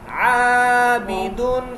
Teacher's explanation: عابدن، الف مدہ، عین حروف حلقے میں سے ہے، با ہونٹوں سے ادا ہوگا، دال باریک پڑھا جائے گا۔